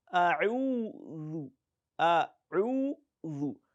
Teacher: bring out the tip of your tongue and place it in between the upper and the lower teeth, and you produce the sound A'udhu